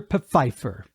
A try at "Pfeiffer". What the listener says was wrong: It's not Pfeiffer, like Michelle Pfeiffer. The P is not silent. It's Pfeiffer.